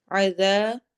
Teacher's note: عین حروف حلقی میں سے، حلق کے درمیان سے ادا ہوگا۔ ذا، ذال کو نرمی سے پڑھیں گے اور الف مدہ کریں گے۔